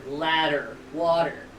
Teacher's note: That's an alveolar tap.